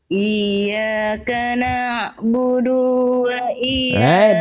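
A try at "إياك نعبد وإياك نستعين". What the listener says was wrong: Du-nya jangan kepanjangan. Du-nya satu harokat. Na'budu wa iyyaka nasta'in. Na'budu terputus ya, dilatih na'budunya.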